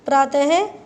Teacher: विसर्ग की आवाज़ जो होती है बेटा ह से आती है